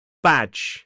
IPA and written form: bædʒ (badge)